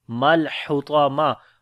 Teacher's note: ہا کو گلے کے درمیان والے حصے سے، طا کو موٹا پڑھیں گے، حروف استعلا ہے